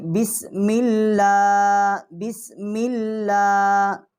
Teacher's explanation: جو اللہ کا لام ہے، اور اس کے اوپر کھڑی زبر بھی ہے، تو اس کو ہم نرم پڑھیں گے